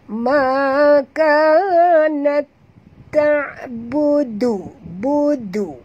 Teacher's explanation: Tu dah jadi tak betul makhraj dal. Dal ni di hujung lidah. Bunyinya pun lain.